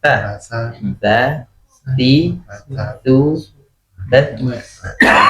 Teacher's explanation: jadi lidahnya di antara dua gigi ya, gigi atas dan gigi bawah